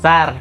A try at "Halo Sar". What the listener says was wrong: Nadanya dilembutkan lagi. Turunin nadanya. Sar.